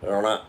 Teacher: There is a little bit of nasal sound also in that. It is different from na.